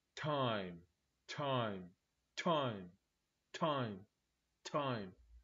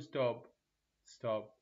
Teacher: تحس اكو دفعه من الهواء انفجار منها ويجي يلامسه اصابعك بس من تقول ستوب ستوب ماكو لذلك هذا هو هو والثانيه